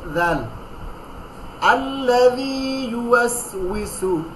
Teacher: জিব্বার আগা উপরের দাঁতের আগার সঙ্গে লাগাই না, দুই দাঁতের আগার সঙ্গে লাগাই, যাল, আল্লাযী ইউওয়াসউইসু, ইউওয়াসউইসু, ইসু বিসু না, ইউওয়াসউইসু, মোটা করে গোল করে, যে ইউওয়াসউইসু, আল্লাযী ইউওয়াসউইসু ফি সুদুরিন নাস।